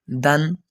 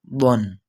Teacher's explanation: دال باریک پڑھنی ہے ہم نے، ضاد کو پور پڑھنا ہے، موٹی آواز میں پڑھنا ہے، تو اس میں واضح فرق محسوس ہوگا۔